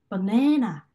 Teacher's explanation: 바네나 이렇게 네 부분 중간 부분만 좀 더 힘이 더 세게 가겠죠. 그래서 바네나 이런 식으로 네 부분에 더 강세가 가겠구나라는 걸 이해할 수가 있습니다.